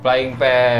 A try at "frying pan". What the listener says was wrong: Bukan flying ya, Pak, frying pan. Frying pan.